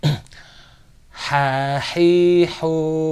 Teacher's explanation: pangkal tenggorokan atau di tenggorokan paling dalam ini dari H yang H ini dari tenggorokan yang bagian tengah lebih dekat sedikit ke arah atas pangkal tenggorokan · Ha ini ada dari tenggorokan juga, cuman di bagian tengah tenggorokan. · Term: huruf h, huruf ha